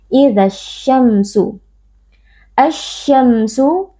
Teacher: bertemu dengan salah satu huruf Syamsiyah yaitu huruf syin cara membacanya Alif lamnya kita idghamkan atau kita leburkan ke dalam huruf syin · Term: alif lam assyamsiah